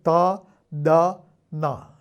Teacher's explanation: ഈ നാവിന്റെ തുമ്പ് അത് പല്ലിൽ ചെന്ന് തൊടുന്നു എന്നുള്ളത് നമ്മൾ ഓർമ്മിക്കുന്നു ത ദ ന